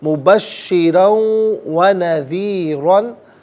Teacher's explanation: وما ارسلناک الا مبشرا ونذیرا، مبشرن میں را پر 2 زبر کی تنوین پر کر کے پڑھا جائے گا، تنوین کو واو کے ساتھ ملائیں گے، واو کی آواز کو غنے کے ساتھ ادا کیا جائے گا، یہاں یرملون کا قاعدہ اپلائی ہوگا، مبشرن و نذیرن نہیں، مبشرن و نذیرن، یہاں وقف کریں گے تو نذیرا پڑھیں گے، را پر 2 زبر کی تنوین پر کر کے پڑھیں گے اور وقف میں الف سے چینج ہوگی تو نذیرا پڑھا جائے گا۔